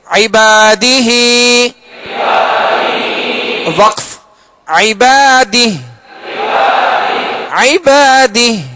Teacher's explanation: ایک الف کی مقدار میں کھینچ کر اس کھڑا زیر کو پڑھیں گے